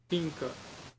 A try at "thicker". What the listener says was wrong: Not think. There's no N there. Thicker.